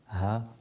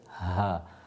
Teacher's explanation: ha, pronounced from the bottom of the throat, ha. It's the deeper of the ha, is a clear air.